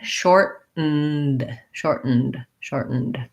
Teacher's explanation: Americans will say shortened where they make that stop T there.